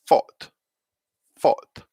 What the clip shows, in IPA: fɔːt